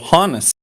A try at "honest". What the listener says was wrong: Honest. No, the correct pronunciation is honest. The H is silent, accent, the H is silent. In all accent, the H is silent.